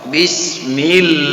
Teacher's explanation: Lam nama Allah di sini akan tipis karena sebelumnya ada huruf yang berbaris kasrah atau baris bawah